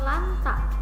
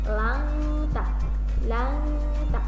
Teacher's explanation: Nunnya disamarkan ya. Nunnya disamarkan. Jadi tidak jelas gitu ya. Antara nun dan ang bacanya jadi langta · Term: ikhfa